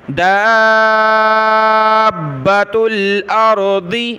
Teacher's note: دال کو کھینچتے ہوئے با سے ملانا ہے